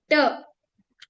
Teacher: जहां पे जीभ ट बोलने के लिए ऊपर जा रही है उस पॉइंट को हम मूर्धा बोलते हैं।